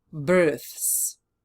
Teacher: The letter s is also voiceless. So now that we have th voiceless and s is following this th voiceless sound s will also remain the same way